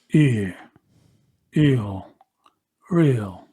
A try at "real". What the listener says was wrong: Much better. I really liked real.